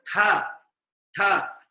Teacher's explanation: T is an aspirate sound because along with t there is a ha sound coming from the throat